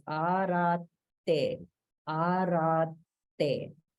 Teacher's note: in arate, there's a double T, which means there's holding, and it comes after a dirgha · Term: holding after a dirgha